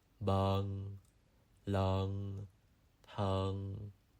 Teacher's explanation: you add a slight G sound at the end